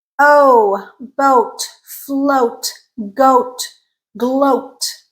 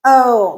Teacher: oh lip rounded it's a tense sound